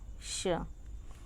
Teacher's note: यहाँ दूसरे नंबर पे है श। तो इसके उच्चारण में हमारी जो जिह्वा है वह नीचे के तालु की तरफ मुड़ जाती है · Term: खटकोण स